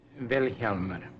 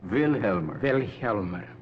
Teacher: The accent's on the first syllable.